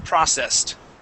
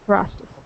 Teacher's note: Okay, this word here, okay, is processed with the accent at the beginning